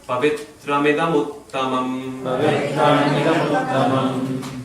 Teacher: There's a tendency to pause after pavitram, but there is no pause there. It's a short syllable.